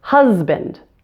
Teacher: the word husband. That S is still pronounced as a Z.